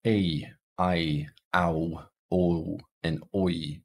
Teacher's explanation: these are vowels with movement in other words they start at a particular location and then they move slightly as they're being pronounced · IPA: eɪ aɪ aʊ oʊ oɪ